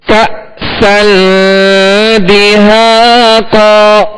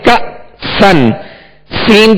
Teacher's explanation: حمزہ ساکن ہے، اس کو جھٹکا دیں گے اور جھٹکے کو واضح کریں گے